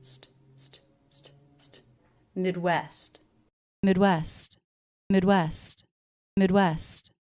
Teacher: And I do pronounce the ending ST cluster, both sounds.